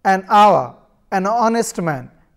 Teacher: begin with a vowel sound as the initial consonant H is not pronounced